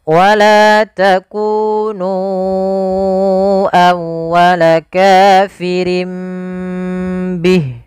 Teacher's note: ditahan suara nya sepanjang 2 harakat untuk menyempurnakan gunnahnya, untuk menyempurnakan itu bacaannya. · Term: iqlab